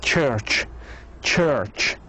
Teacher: This is affricate, voiceless, and alveopalatal or post-alveolar.